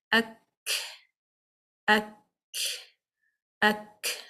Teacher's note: the back of the tongue for the letter kaf is raised and it is touching the hard and the soft palate. That also blocks the sound.